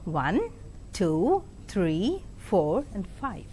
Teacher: rising tone is used while in numerating or listing